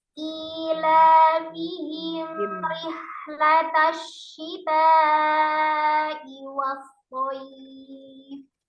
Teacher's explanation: Mim sukun ketemu dengan roknya, diizharkan. Izhar safawi, tidak putus ya, alirkan mimnya.